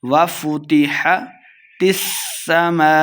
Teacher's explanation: سین مشددہ تا کو سین کے ساتھ ملا کے پڑھیں گے